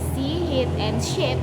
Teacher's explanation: This is a high front vowel